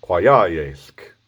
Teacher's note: you're putting your tongue to your teeth like an L and putting the air past them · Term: belted L